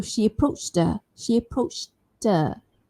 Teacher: Sometimes native speakers might not say the h sound